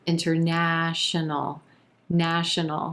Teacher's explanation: our emphasis on that third syllable and the ah as in black